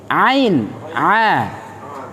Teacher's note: Bersamaan dengan huruf H. Namun huruf H itu ada nafas yang mengalir, sedangkan Ain, A itu tidak mengeluarkan nafas. · Huruf Ain itu keluar dari tenggorokan bagian tengah.